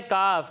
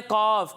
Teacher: काफ को पतला पढ़ते हैं और कौफ को मोटा पढ़ते हैं।